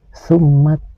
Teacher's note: Huruf mim yang bertasdid ini harus dibaca gunnah, yaitu dengung ke hidung. Panjang dengungannya sekitar 1,5 alif atau 3 ketukan.